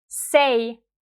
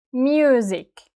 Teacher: It could be a voiceless S like in the word say S, or it could be a voiced S like in music.